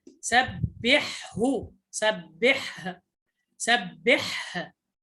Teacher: فتبين الحاء وتقف على الهاء ظاهرة